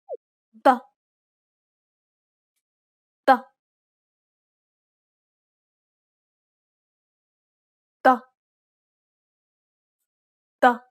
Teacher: To produce the dark variety, build up pressure at the point of contact and at the same time retract the root of your tongue a little to constrict your throat muscles and then release the air emphatically. This should give you a darker sound.